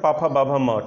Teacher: ये बिल्कुल इतने ही व्यंजन आपके जो है पा वर्ग में ओष्ठ से ही बोले जाएंगे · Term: ओष्ठ ध्वनियां